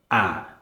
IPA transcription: æ